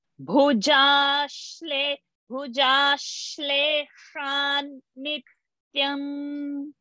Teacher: Bhujha, no, not Mahaprana. Ja, Alpa Prana.